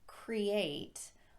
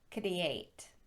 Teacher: the tongue raises up very high in the mouth tenses and pulls back